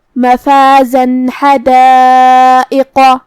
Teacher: اگر ہم یہ آیت کو اگلی آیت کے ساتھ ملا کے پڑھیں تو جو کہ حرف الحا کلمت حدائق میں حروف الاظہار میں سے ہے اور اظہار کا معنی ہے ظاہر کرنا اور تنوین کی اصلیت نون ساکن ہے تو ہم یہاں تنوین ظاہر کریں گے اور نون ساکن پڑھیں گے اور بغیر غنہ سے یہ حکم کو ادا کریں گے